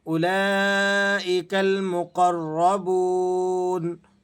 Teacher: قاف اور را، را بھی اس وقت موٹی پڑی جانے والی حالت پر ہے، تو آپ نے دونوں کو موٹا کر کے ادا کرنا ہے۔ مقر، اور را مشدد بھی ہے، اس لیے آپ اسے ذرا سختی کے ساتھ اور جماؤ کے ساتھ ادا کریں گے۔